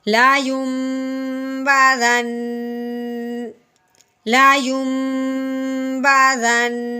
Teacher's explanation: وقف کی صورت میں اس کو ساکن کریں گے اور شد کی وجہ سے اس پہ غنہ بھی جاری رکھیں گے